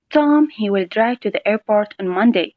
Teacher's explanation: the emphasis will naturally be on the word Tom.